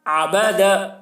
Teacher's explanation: عین کو حلق سے ادا کر رہے ہیں اور زبر کا خاص خیال رکھ رہے ہیں، کھینچ نہیں رہے کسی کو